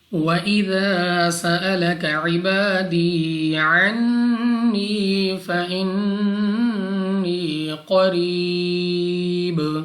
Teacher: یا ساکن سے پہلے زیر یا مدہ 2 سیکنڈ تک کھینچ کر لمبا کر کے پڑھنا ہے. قاف مستعلیہ میں سے ہے موٹا پڑھیں گے. · نون مشدد غنہ کر کے پڑھیں گے یعنی ناک میں لے جا کر پڑھنا ہے.